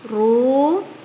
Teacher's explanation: Pada lafadz fa'aktsaru ru terdapat bacaan mad tabi'i, sebab ada harokat dhamma bertemu dengan wawu sukun.